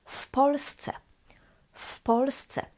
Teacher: this W, W, changes to F because P is voiceless and voiced W changes to its voiceless equivalent F.